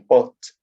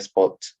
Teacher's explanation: the phoneme P is pronounced with the aspiration allophone PH in pot, but without aspiration P in spot